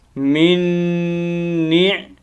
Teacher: یہ میم ساکن کے نون ساکن کے بعد دوسرا نون ہے، تو دو نون جب ایک جیسے اکٹھے آ جاتے ہیں تو ان کا ادغام ہوتا ہے. تو یہاں کیا کریں گے، ایک ہی نون پڑھیں گے، من نیع نون زیر عین نیع، ٹھیک ہے.